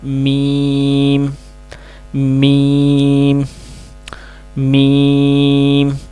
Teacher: یہ دونوں ہونٹوں کے بیرونی جو خشک حصہ ہوتا ہے، اس کو آپس میں ملانے سے لفظ میم ادا ہوتا ہے